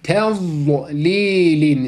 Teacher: dilin yan tarafı üst azı dişleri değmek suretiyle çıkarılacak olan harf bunu da yine mahrecen ve sıfatıyla birlikte çıkarıyoruz tein şeklinde çıkarıyoruz